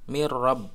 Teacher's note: nun sukun bertemu ro ini tidak ditahan sebagaimana tadi Idgham Bighunnah jadi membacanya langsung mirrob tidak [Musik] di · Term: bilagunnah